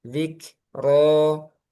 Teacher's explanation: Zikro ada hamasnya, aliran nafas.